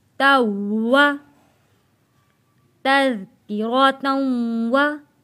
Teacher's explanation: ता को हम तशदीद वाले वाव के साथ मिलाकर सख्ती के साथ थोड़ा रुक कर अदा करेंगे। जैसे कि ता वाव ज़बर तौ, वाव ज़बर वा, तौवा, तज़किरतन वा।